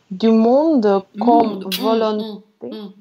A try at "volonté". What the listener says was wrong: Volonté, il n'y a pas de on. Quand on a on, c'est toujours on. Il n'y a pas de on.